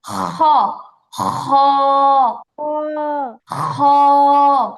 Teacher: খ, খ না আপু, খ। গলার মধ্যে একটা খসখস আওয়াজ হবে।